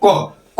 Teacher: क बोल रहे लेकिन अ का उच्चारण थोड़ा हो रहा